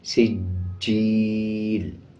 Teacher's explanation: سین کو جیم کے ساتھ ملا کے پڑھیں گے اور جیم پہ مضبوطی کے ساتھ بھی جیم کو پڑھا جائے گا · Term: شد